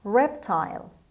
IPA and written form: ˈreptaɪl (reptile)